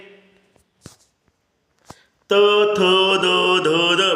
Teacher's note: जीभ कशी त्या दातावर नाचली जाते नाचते म्हणून ह्याला काय म्हणतात दंत्य म्हणतात